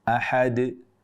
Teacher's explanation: Jadi qalqalah tidak boleh sepanjang itu. Ahad, langsung berhenti tanpa memutus suara di pita suara, yaitu menambah hamzah, juga tanpa memanjangkan kadar terlalu berlebihan